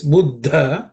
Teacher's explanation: the second letter D is an aspirated D